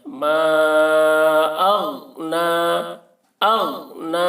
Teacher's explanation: ماں کو کھینچیں گے کیونکہ اس میں مد ہے، اور اغنا، غین کو بھی بہت ہی احتیاط کے ساتھ ادا کرنا ہے، غین میں قلقلہ نہ ہونے پائے، یعنی ما اغ ایسے نہیں کرنا ہے، بلکہ آواز کو غین میں روک لینا ہے۔